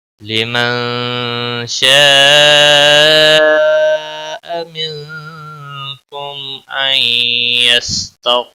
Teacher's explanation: شین آیا ہے، اخفا حقیقی ہوگا، گنہ کے ساتھ پڑھیں گے، شاء بڑی مد ہے، مد متصل 5 الف کے برابر کھینچ کر پڑھیں گے ، منکم نون ساکن کے بعد حروف اخفا کا کاف آیا،